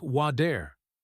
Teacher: It gets lazy. Instead of hitting the roof of the mouth sharply, the tongue just taps it quickly. It sounds exactly like a fast D sound. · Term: flap T